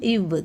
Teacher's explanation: இவ் கீழ் உதடும் மேல்வாய் பல்லும் பொருந்துவதால் பிறக்கிறது